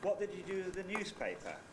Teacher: we might have a high head starting on what and a high fall on use so it would sound like